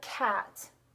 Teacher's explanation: the k and g are made the furthest back in the mouth, at the furthest back in the oral cavity at the velum, the soft palate.